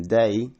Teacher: A as in day stayed largely the same, perhaps becoming a bit more monophthongal.